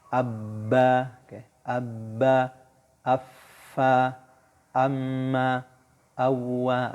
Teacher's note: Contoh, jadi kalau mau kita makhrajnya itu jelas, boleh kita tasydidkan hurufnya atau kita sukunkan kayak abba, kayak abba, affa, amma, awwa. Oke, jadi kerasa banget keluarnya di dua bibir